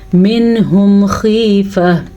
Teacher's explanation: یہاں پہ اظہار کا قاعدہ ہے، نون ساکن کے بعد اگر ہا آ جائے تو اظہار کا قاعدہ ہوتا ہے، یعنی کہ نون ساکن کو ظاہر کر کے پڑھتے ہیں، وہاں پہ غنہ بھی نہیں کرتے